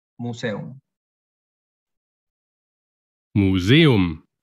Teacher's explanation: Pero cuidado con las palabras como museum, donde la E y la U forman parte de sílabas distintas, por lo que no hay diptongo, y la pronunciación en alemán es simplemente museum.